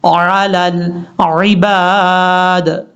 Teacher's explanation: لام کو لام سے کنیکٹ کرتے ہوئے بیچ میں حمزہ اس کو چھوڑ دیں گے